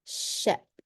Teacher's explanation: When we say the sh sound, if you put your hand in front of your mouth, you're going to feel it blowing onto you, and it's a continuous flow.